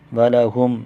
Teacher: میم پر اظہار شفوی ہوگا، غنہ نہیں کریں گے